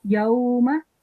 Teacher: meme is carrying fatha on top, so we only have to prolong it for 1 second.